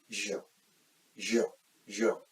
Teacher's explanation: When you make the sound of j, there is slight pressure or tension in your vocal cords, and that is why it is voiced sound.